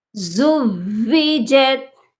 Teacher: واؤ مشدد ہے، یہاں پر واؤ مدہ بالکل نہیں بنانا، زوجت نہیں ہوگا.